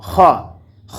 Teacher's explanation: খ হরফটিকে আমরা উচ্চারণ করব কণ্ঠনালীর শেষ ভাগ হইতে।